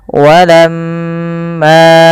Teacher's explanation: ditahan suara mnya sepanjang dua harakat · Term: bacaan ghunah